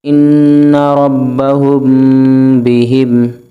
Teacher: اخفاء شفوی، ان ربہم بہم، یہاں پہ میم ساکن کے بعد با آ رہا ہے تو ہم غنہ کریں گے، اخفاء کریں گے۔